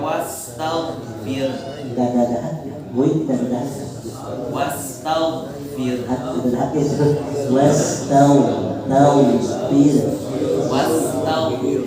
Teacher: Hati-hati huruf goin itu tidak ada dahak walaupun sama-sama satu rumah sama huruf kho.